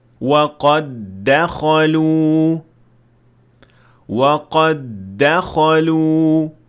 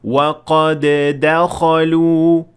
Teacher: You should fuse them into one del, and when this happens, Qalqalah is then disabled, even though the dal at the end of qad has sukun.